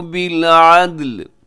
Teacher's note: عدل یہاں آخر میں جو لام ہے اس کے نیچے زیر ہے لیکن ہم جب وقف کرتے ہیں تو لام کو ساکن کر دیں گے